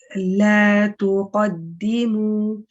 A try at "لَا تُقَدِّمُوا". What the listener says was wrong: Now the ta can be a little bit lighter. Tu, la, tu. So just how you say la, you've got a lightness to the la. Maintain that lightness even when you say tu. La tuqaddimu.